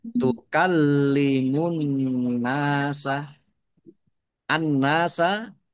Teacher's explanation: nun tasdid dibaca ghunah atau mendengung ditahan biar tampak mendengungnya